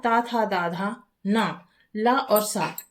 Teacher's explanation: इन वर्णों का उच्चारण दंत स्थान से होता है।